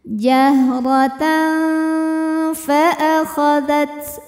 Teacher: ikhfa ausat karena ada win fathah yang menghadapi huruf Fa maka bunyi tanwinnya ini dibunyikan samar-samar siap-siap menuju makhraj huruf Fa disertai bunyi dengung